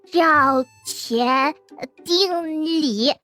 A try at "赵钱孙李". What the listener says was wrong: 不 是 丁 李 ， 是 孙 李 。